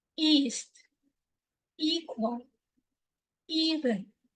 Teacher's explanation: the front part of the tongue is high in the mouth lips are unrounded facial muscles are relatively tense like you are smiling